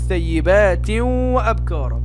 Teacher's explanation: ثيبات وأبكارا تنوين جاء بعد التنوين حرف الواو، فيكون إدغام بغنة